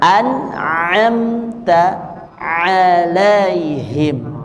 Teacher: Dua huruf tengah tenggorokan, yang pertama yaitu huruf yang terhenti dulu, ya, yaitu huruf ain. Nah, supaya kita bisa bedakan dengan huruf hamzah, maka kita alirkan bunyi ainnya. Nah, jadi tidak tapi jadi ditekan di makhrajnya.